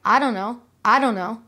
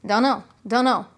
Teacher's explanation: you don't usually hear each of the words i don't know they tend to be put together into an informal contraction and it sounds more like i don't know i don't know